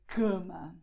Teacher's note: you notice that the air is going upwards, okay? The air is being lifted to your nose. And this is why you feel like a heat in this region, okay? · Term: nasal sound